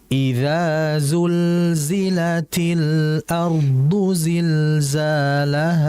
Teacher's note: Dan yang kedua fokus pada aliran lam mati. Karena huruf lam mati ini merupakan huruf yang memiliki sifat tawasud, harus dialirkan. Jangan dibaca cepat.